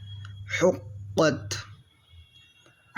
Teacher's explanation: یہ حرف قلقلہ ہے قاف اس لیے مشدد ہونے کی وجہ سے جماؤں کے ساتھ ادا کریں گے